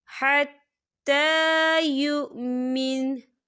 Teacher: وقف کی صورت میں نون جو ہے وہ ساکن ہو جائے گا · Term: نون ساکن